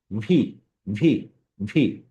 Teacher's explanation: ওপরের দাঁত আর নিচের ঠোঁট, মানে দাঁত এবং ঠোঁট দিয়ে আমরা ভি উচ্চারণ করব।